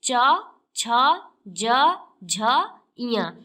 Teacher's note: तालु और जीभ के स्पर्श से बोले जाने वाले वर्ण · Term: तालव्य